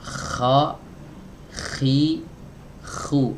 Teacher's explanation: Keluar dari tempat yang sama dengan huruf ghain tapi diiringi dengan sifat hams atau aliran nafas. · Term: huruf kha